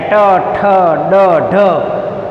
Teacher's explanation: મૂર્ધન્ય વ્યંજન કે ભાઈ મૂર્ધા ત્યાં અવરોધાય. જીભ વળી અને થડકારા સાથે ઉચ્ચાર થાય.